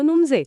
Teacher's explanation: आणि पहिला अ गायब होतो आणि शब्द तयार होतो नुमजे